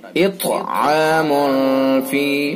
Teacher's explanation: اطعام فی، میم کے اوپر 2 پیش ہیں اور تنوین کے بعد اخفاء کے 15 حروف میں سے فا ہے، لہذا اخفاء حقیقی ہوگا، ناک کے بانسے سے ادا کریں گے